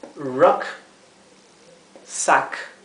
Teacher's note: Ruck se pronunciaría como un entremedio de una A y una E.